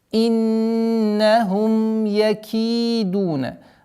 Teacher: четкое произношение кесры, удержание нуна, назализация в размере двух огласовок